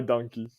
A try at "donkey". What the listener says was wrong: You say it like donkey, like with a U, like Dunkaroos, donkey, donkey, donkey.